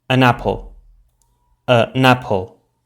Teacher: the n of the article forms a syllable with the initial a of apple, so we would pronounce it an apple, an apple.